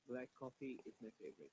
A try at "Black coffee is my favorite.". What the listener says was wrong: Okay, don't break it again because in black there is ka sound, in coffee there is ka sound. Though they are different alphabets, but they sound same. Yeah, black coffee. If you pronounce it black coffee quickly, black coffee is my favorite.